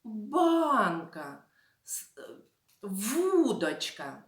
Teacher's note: наголос в цих словах падає на перший склад